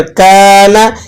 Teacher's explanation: کاف کے بعد الف لگا ہوا ہے تو یہ الف مدہ ہے، آپ نے اس کو ایک الف تک کھینچ کر کانا اس طرح سے ادا کرنا ہے